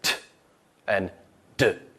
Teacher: If you say them at home, you can tell the tip of your tongue is on that alveolar ridge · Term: alveolar sounds